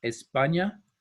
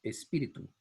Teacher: you have an added E sound at the beginning of a word that has an S followed by a consonant, in this case, the P.